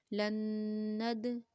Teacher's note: دال کے اوپر جزم ہے یعنی دال ساکن ہے ہمارے پاس تو قلقلہ بھی کریں گے